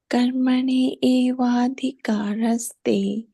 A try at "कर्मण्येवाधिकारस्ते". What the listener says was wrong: Now try to combine both of them. Yeah, so try to combine. Yeah, so try to combine the two together and pronounce it like that. It'll come nice.